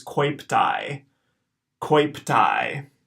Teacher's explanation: in the second syllable we get the AE diphthong that's gonna be pronounced I